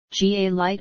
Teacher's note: GA has dark L in most cases